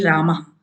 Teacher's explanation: राम के विसर्ग का स्थान कंठ